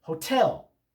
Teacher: The second syllable of the word is naturally stressed.